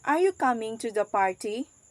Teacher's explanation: The rising juncture here is at the end of the question, indicates that the speaker is expecting a response.